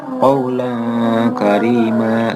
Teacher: Cara membacanya seperti membaca huruf ang dan juga dengan ada dengungnya. Cara membacanya qaulan karima, jadi bukan qaulan karima, jadi qaulan karima, ada dengungnya. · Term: ikhfa sugro